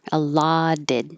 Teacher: the T here, allotted, changes to a D.